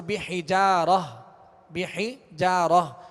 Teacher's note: اگر یہاں وقف کریں گے تو تا گول تا کو ہائے ساکنہ سے بدل کر وقف کریں گے